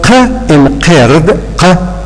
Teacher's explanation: this is formed by the narrowing of the vocal tract at the uvula. And so, words which are produced at that particular point are called uvular consonants.